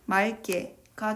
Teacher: 맑게의 경우는 예외사항이므로 기역이 탈락되고 어미의 기역이 된소리로 교체됩니다. 최종적으로 맑게가 되겠습니다.